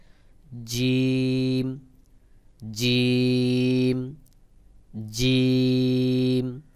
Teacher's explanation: জিম হলো জিহ্বার মাঝখান থেকে একটু চাপ দিয়ে শক্ত করে উচ্চারণ হবে